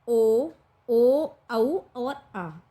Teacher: ये होठों का भी सहारा लेती हैं, और हमारी कंठ पे भी, जो हमारे अंदर कंठ होता है उस पर भी ये ध्वनियाँ स्पर्श करती हैं जब हम इन वर्णों को बोलते हैं। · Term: ओष्ठ धन कंठ